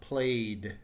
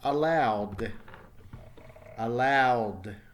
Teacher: notice it's a D sound the end and no extra syllable